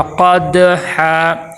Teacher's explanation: آگے قد، یہاں پہ دیکھیں قاف حروف مستعلیہ موٹے حروف میں سے ہے اور دال کے اوپر جزم ہے، دال حروف قلقلہ میں سے ہے، یہاں پہ قلقلہ ہوگا